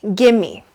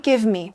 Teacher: The V completely disappears and the me shortens.